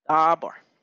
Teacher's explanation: So bar, that would be the tonic syllable, right? Because it is the accented syllable.